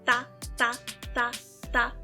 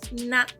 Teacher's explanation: Tá vendo como o ponto de articulação é o mesmo? Ou seja, você pronuncia esses dois sons no mesmo lugar da boca.